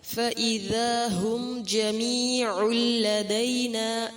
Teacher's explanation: پھر تنوین کے بعد لام ہے، ادغام غنہ کے بغیر ہوگا